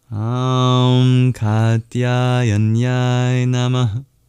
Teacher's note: the two A's in Katya are long. And at the end, there's a diphthong, I, that's also long.